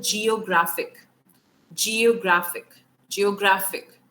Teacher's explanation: तो अगर suffix है which जो ic, शन, tion, sion, अगर ये किसी word के पीछे आ रहे हैं तो the stress is on the penultimate. Penultimate मतलब second last syllable.